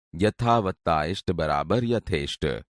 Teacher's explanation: બને છે હવે બીજું ઉદાહરણ જુઓ યથાવત્તા ઈષ્ટ બરાબર યથેષ્ટ જેમાં આ અને હસ્વઈ ભેગા થવાથી પણ એ થાય છે